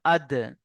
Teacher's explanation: ধাক্কা লেগে আওয়াজটা বেরিয়ে আসবে, ধাক্কা দিয়ে পড়তে হবে। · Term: কলকলা